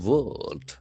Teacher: So the letter R is silent here.